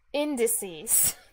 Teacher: indices has stress on the first syllable